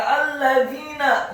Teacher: Ya ayyuhalladzina, kata alladzina, huruf lamnya ditasydidkan fathah 1 harokat, huruf dha-nya dibaca tipis, lidahnya agak keluar sedikit, kasrah 2 harokat karena setelahnya ada ya sukun, dan huruf nunnya dibaca tipis, fathah 1 harokat.